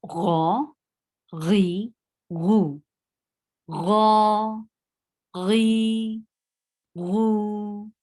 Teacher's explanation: this is a heavy letter because we are lifting our tongue up to pronounce it